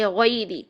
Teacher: मोड़ पैदा करेंगे गौइन की, जबर अदा करते हुए फिर या की तरफ मोड़ पैदा करेंगे